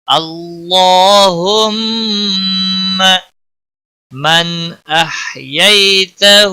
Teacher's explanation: من نون ساکن کے بعد حروف حلقی کا حرف آیا ہے، اس لیے یہاں پر اظہار ہوگا، اس اظہار کو اظہار حلقی کہتے ہیں۔